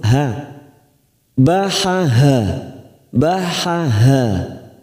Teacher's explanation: huruf Ha ini tenggorokan yang paling bawah maka membutuhkan tenaga ketika membunyikan huruf ha